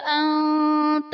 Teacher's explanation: انت میں نون ساکن کے بعد حروف اخفاء میں سے تا ہے تو یہاں پر اخفاء کا قاعدہ ہوگا، یعنی نون ساکن میں ہم غنہ کر کے پڑھیں گے